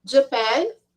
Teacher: a pronúncia deste país é a sílaba tônica é na segunda sílaba não é na primeira